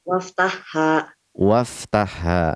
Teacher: Wa iftah. Hamzah wasal di tengah-tengah pembicaraan tidak dibaca, jadi tidak dibaca.